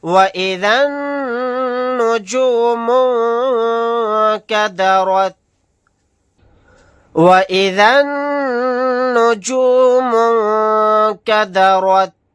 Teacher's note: یہاں پر نون مشدد ہے یعنی نون کے اوپر تشدید ہے، یہاں پر غنہ کر کے پڑھیں گے